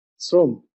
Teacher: লিখলা তালব্যস্য, উচ্চারণ করেছ দন্তস্বরের মতো